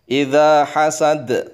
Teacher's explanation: kalau dibaca waqaf harus langsung direm, masuk kepada huruf dal yang harus qalqalah. Idza hasad harus qalqalah, jangan idza hasad.